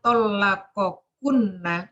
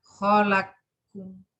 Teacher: qaf diidghamkan ke kaf dengan syarat sebelum qaf berharokat dan sesudah kaf mem jamak